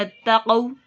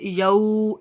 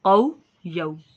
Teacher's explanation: कौ पे होंठों को बिल्कुल गोल करें, लंबा नहीं करना, ठीक है ना। ये वाव मद्दा नहीं है, ये वाव लीन है, और वाव लीन पे आप बिल्कुल रुक जाएं और होंठों को गोल कर लें